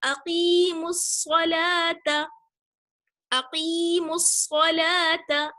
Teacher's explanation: تو ہم میم کو ڈائریکٹ صاد سے ملائیں گے، میم صاد پیش مس، صاد زبر صا، مس صا، اقیم الصا، لام کھڑا زبر لا، اقیم الصلاۃ، تا زبر تا، اقیم الصلاۃ۔ الف اور لام جو صاد سے پہلے ہے وہ ہم نے نہیں پڑھا کیونکہ صاد جو ہے وہ حروف شمسی میں سے ہے، جو حروف شمسی 14 ہیں، صاد ان میں سے ایک ہے، اور اس سے پہلے اگر الف لام آ جائے، حروف شمسی جو 14 ہیں ان سے پہلے اگر الف لام آ جائے تو الف لام پڑھا نہیں جاتا ہے۔